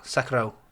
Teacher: I think the correct pronunciation of it is it is like Sekiro, but with a rolled R.